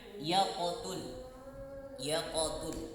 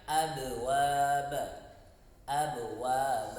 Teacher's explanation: sifat pantulannya itu tidak lebih jelas atau lebih kecil dibanding nanti qalqalah kubro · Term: sugro